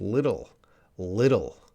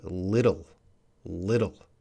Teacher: the TT might sound like a D sound